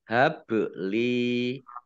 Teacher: habli ba sukun bacaan Qolqolah Sugro dibaca memantul